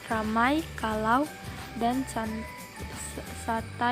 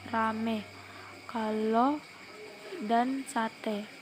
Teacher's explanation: perubahan dua bunyi vokal atau vokal rangkap menjadi vokal tunggal atau monoptong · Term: monoptongisasi